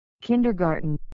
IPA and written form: ˈkɪndərˌɡɑːrtən (Kindergarten)